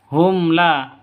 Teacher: Mim mati bertemu dengan lam. Hum la, jadi jelas, terang karena izhar safawi.